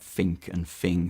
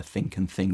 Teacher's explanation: you get fink and fing for think and thing which sound quite London